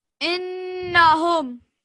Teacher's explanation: Just put more time on the nun mushaddad.